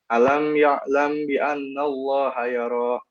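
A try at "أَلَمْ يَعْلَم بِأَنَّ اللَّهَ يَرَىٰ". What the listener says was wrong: Ini kurang lagi mim sukun bertemu baknya, terus nun tasdidnya. Dengung, kenapa sih?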